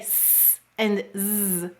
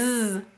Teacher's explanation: if you feel uh your throat as you say S and Z, you'll notice that ZZ, your voice box vibrates. And if you feel your mouth and the shape of your mouth when you say S and Z, you'll notice the shape of your mouth is exactly the same. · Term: voiced